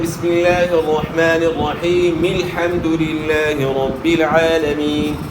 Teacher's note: الحمد کے شروع میں یہ حمزہ وصلی ہے. تو ملانے کی صورت میں درمیانی کلام میں جو ہے حمزہ وصلی گر جاتا ہے